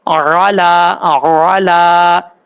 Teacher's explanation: الا پڑھیں گے تو غلط ہو جائے گا، علا علا، لام کے اوپر کھڑا زبر ہے، ایک الف کی مقدار لمبا کر کے پڑھیں گے